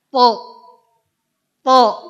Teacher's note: Huruf to ini di antara sifatnya harus isti'la, terangkat pangkal lidahnya.